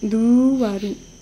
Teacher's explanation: basically the u becomes lengthened, and then you add a ru at the end, an RU sound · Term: gemination